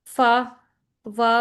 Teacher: ठीक है, ये ऐसी साउंड होती हैं जिसमें हमारा जो लोअर लिप होता है ना वो हमारे अपर फ्रंट टीथ से जाके टच करता है। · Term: लेबियो डेंटल साउंड